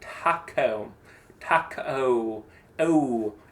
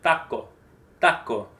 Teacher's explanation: It ends. It doesn't change. It's just O.